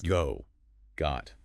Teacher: it's definitely lower, more open for got. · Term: short O